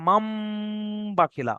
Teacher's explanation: পড়া কিরকম হবে দেখেন, এখানে রয়েছে মিম নুন জাবার মান, বাখিলা, কিন্তু নুন সাকিনের পরে বা হওয়ার কারণে নুন সাকিনটা বাদ যাচ্ছে, কি হবে কি, এই মিম থেকে ছোট্ট মিমটা ধরবেন, মিম মিম জাবার মাম, বাখিলা, মানে নুন সাকিনের আওয়াজটাকে মিম সাকিনে পরিণত করে দিলাম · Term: ইকলাব